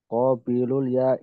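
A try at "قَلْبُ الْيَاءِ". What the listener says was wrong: qalbu bukan qabilu qalbul ya'i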